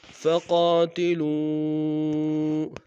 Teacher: واو مدہ کے اوپر مد منفصل ہے، کم سے کم دو الف انداز میں کھینچیں گے